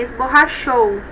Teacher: Primeiro tem a vogal O, depois a semivogal U. Então, é decrescente.